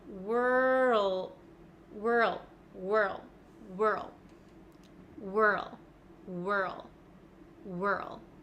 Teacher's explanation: I can feel my tongue sliding from the back to the front so from R to L · when I make this W with my lips at the same time my mouth is ready for the r sound so when I'm making this face my tongue is already in